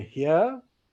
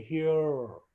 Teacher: the Americans have a very strange variety of r, which is more vocalic.